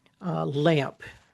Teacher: So if I say the word lamp, I'm ending that in the sound amp, A-M-P, right? And so the M and the P kind of blend together to make that ump sound, right?